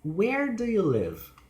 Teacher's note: the information questions, they have falling pitch.